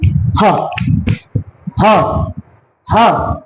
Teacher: आप देख रहे हैं कि आवाज कहां से आ रही है? कंठ से। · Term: कंठ ध्वनि